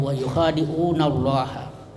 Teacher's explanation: Kalau ada fathah sebelum Allah, itu tebal, Allah mufakhamah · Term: lam mufakhamah